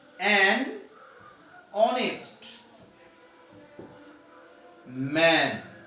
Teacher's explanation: Here look, an is used before a consonant letter, because here this consonant letter H is not pronounced. Here the pronunciation, the sound of this letter is silenced, muted.